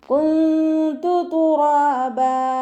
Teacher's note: നൂൻ സാക്കിനയ്ക്ക് ശേഷം ഇഖ്ഫാഇൻ്റെ അക്ഷരമായിട്ടുള്ള ത വന്നു. നൂൻ സാക്കിനെ മറച്ചു വെച്ചിട്ട് മണിച്ചോതി കൊടുക്കുക